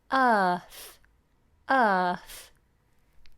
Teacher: we don't pronounce the R uh see how flat the tongue is it doesn't curl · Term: flat ah